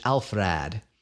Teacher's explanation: documented rule called vowel reduction in unstressed syllables in this word the stress lands on the first syllable elf so people got a little lazy with the second syllable and the vowel got shortened